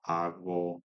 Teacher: I'm sort of allowing it to be this is a fricative, I believe, voiced velar fricative. So agwo, which approximate fricative.